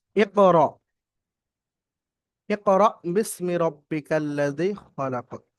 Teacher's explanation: এখানে আলিফের উপর সাকিন এসছে, সাকিনযুক্ত আলিফ অর্থাৎ সাকিনযুক্ত হামজাকে একটু ঝাটকা বা ধাক্কা দিয়ে পড়তে হয়